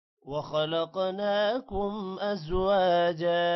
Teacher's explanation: وخلقناکم، خو موٹا ہوگا، قوف بھی موٹا ہوگا، قوف پر قلقلہ بھی ہوگا۔ ناکم، نون پر کھڑی زبر ہے، تھوڑا سا لمبا کریں گے۔ ازواجا، واو کے بعد الف ہے، لمبا کریں گے، جا کو بھی لمبا کرنا ہے۔